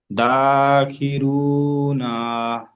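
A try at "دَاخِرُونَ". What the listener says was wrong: নাটা টান দিতে হবে না, নাটা জলদি ছাড়তে হবে। দাখিরুনা, নাটা হারা, জি, নাটা হারাকাত তো, ওই জন্য জলদি ছেড়ে দিতে হবে। মাদ্দাগুলো টান দিতে হবে, হারাকাতকে জলদি ছেড়ে দিতে হবে।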